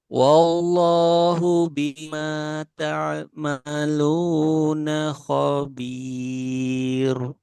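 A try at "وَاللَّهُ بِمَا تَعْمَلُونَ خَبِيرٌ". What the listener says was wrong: Nah, itu masih tebal. Di sini kan roknya tipis. Khabir. Nah, tipiskan lagi.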